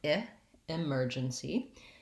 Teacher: We have second syllable stress in this word, and that means that my mer syllable is long and stressed, and my first syllable, the letter E, sounds like an I. It's an unstressed I sound